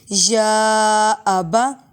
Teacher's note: قالت احداہما یا ابا، یا پہ کھڑا زبر بھی ہے اور مد بھی ہے، لمبا کریں گے